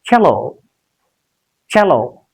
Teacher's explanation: The stress will be on the first syllable. It's a disyllabic word. Two syllables are there in this word.